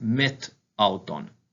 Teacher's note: the vowel at the end of the preposition actually elides or drops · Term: elision